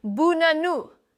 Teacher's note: It's the schwa, that lazy little uh sound, and it appears in nearly every unstressed syllable in English. The word banana is actually buh-nah-nuh.